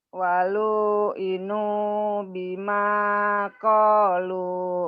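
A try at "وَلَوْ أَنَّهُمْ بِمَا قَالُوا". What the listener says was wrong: panjang pendeknya salah. Yo dicoba lagi. Coba lagi.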